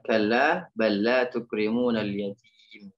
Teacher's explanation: Ya, jadi lam bertemu dengan lam. Lam pertama sukun masuk ke lam yang kedua. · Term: idgham mislain